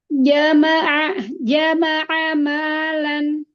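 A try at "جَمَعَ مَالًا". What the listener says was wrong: Jaja, kurang kuat sedikit. Jama'ah. Ditahan. Jama'ah ma.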